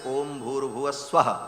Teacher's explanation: है ओम भूह ओम भुवाह ओम स्वाहा ये तीन व्याह है तीनों को जब एक साथ उच्चारण किया जाता है तो ओम भूर भुव स्व ऐसा हो जाता है विसर्ग को र हो करके और फिर व र ऊपर चला जाता है तो भूर भुव